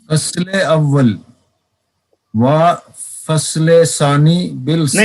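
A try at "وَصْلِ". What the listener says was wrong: नहीं, आगे वसले है, आप यहाँ भी फसले कह रहे हैं, ध्यान से, ध्यान अंदर रखें सब।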